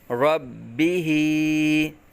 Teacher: با مشدد جماؤں کے ساتھ قلقلہ کریں گے۔ با متحرک، ہا کھڑا زیر قائم مقام یا مدہ ایک الف تک کھینچ کر پڑھیں گے۔